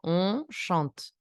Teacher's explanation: No se pronuncia la E, por consecuencia cae el sonido sobre la T.